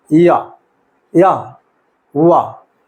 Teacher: इनका उच्चारण स्वरों की सहायता से होता है, स्वरों के अनुसार होता है, इसलिए इनको अर्धस्वर कहा जाता है